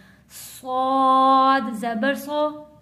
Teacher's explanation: सौद मोटा पढ़े जाने वाला लफ्ज, आवाज को भारी करके पढ़ने जाने वाला लफ्ज और सीटी वाला लफ्ज है।